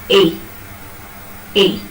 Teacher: Place it below this line, half close line, below it, and take it to just above half close. Just below half close to just above half close.